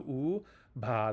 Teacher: That's an aspirated b. And then ah, that's the long a.